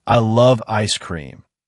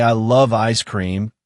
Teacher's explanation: the emphasis on love makes the sentence feel more engaging and authentic